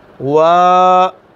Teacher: اب واو کے اوپر آ گئی ہے کھڑی زبر، تو کیسے پڑھیں گے؟ وا، تھوڑا سا لمبا کر لیں گے۔